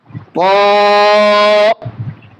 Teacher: জিহ্বার আগা সামনের উপরের দুই দাঁতের গোড়াতে আমরা লেগে দেব, দিয়ে ত হরফটা উচ্চারণ করব।